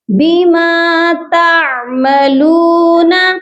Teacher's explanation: عین کی آواز حلق کے درمیانی حصے سے آئے گی